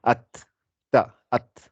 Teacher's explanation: Ça veut dire elle est précise quand on te dit la lettre ta, c'est l'arrière de la langue, enfin l'arrière de la, comment dire, les racines des dents ici, les incisives du haut, avec l'extrémité de la langue, ça fait at, ta, at.